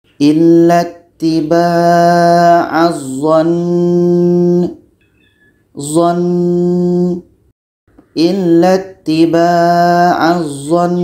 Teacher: Nun tasydid ini atau nun syaddah ini tetap kita baca dengung karena hukum nun syaddah dengung ya.